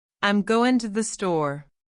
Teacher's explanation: The G sound in going is dropped. The to the becomes tu.